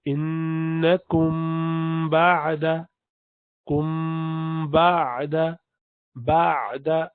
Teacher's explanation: تو انکم بعد، کم بعد، بعد عین جو ہے بینیہ ہے، اس لیے اس کو تھوڑا سا کھینچتے، ہلکا سا لمبا کر کے پڑھتے ہیں،